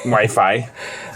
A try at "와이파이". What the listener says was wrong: No, it's just Wi-Fi. 와이파이. Yeah, you can say with the F sound, but if you say it with a P sound, people understand it better. 와이파이